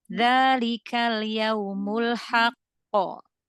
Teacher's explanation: Qafnya dia qalqalahnya ditahan sebentar ya, karena dia tasydid ya.